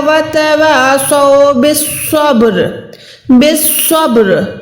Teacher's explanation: के साथ मिलाकर यहां पर कलक करना है बा साकिन है जब भी बा साकिन होती है तो वहा पर हमने वाइब्रेशन करनी है आवाज को लौटाना है